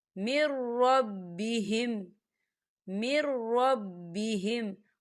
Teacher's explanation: یہاں دیکھیں نون ساکن ہے اور نون ساکن کے بعد را آ رہا ہے، اور را جو ہے حروف یرملون میں سے ہے تو یہ بلا غنے کے ادا ہوگا